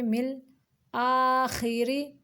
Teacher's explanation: را کو باریک پڑھیں گے کیونکہ اس کے نیچے زیر ہے